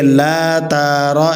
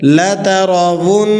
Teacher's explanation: لام پر زبر ہے اور تا پر بھی زبر ہے، حرکات کھینچی نہیں جاتی، اور اسی طرح را پر بھی زبر ہے، اسے کھینچ کر پڑھنا بالکل مناسب نہیں ہے، بالکل درست نہیں ہے۔